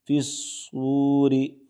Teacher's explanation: را کو زیر ہے اس لیے را کو باریک پڑھیں گے